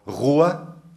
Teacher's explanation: un rótico múltiplo, r, que es pronunciado uvular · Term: gótica uvular